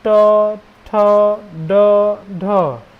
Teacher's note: ट बोल रहे हैं तो देख रहे जीभ दांत के पीछे जा रहा है, जहाँ पे लाइन बना हुआ है ना, ट, ठ, ड, ढ, देख रहे हैं। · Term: मूर्धा